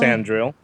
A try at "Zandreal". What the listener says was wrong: it's not. It's Zandreal. There's no D. You gotta kind of roll. It's Zandreal.